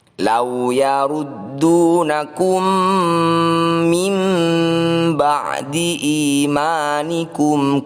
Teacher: Perhatikan, di sini ada huruf mim yang ekornya mengarah ke bawah. Ini adalah tanda bacaan iklab, yaitu nun sukun bertemu ba. Cara membacanya kita baca dengung 2 ketukan.